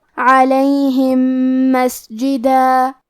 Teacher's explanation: ہم پہلے میم کو دوسرے میم میں ملا کے ایک ہی میم غنہ اور تشدید کے ساتھ پڑھیں گے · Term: ادغام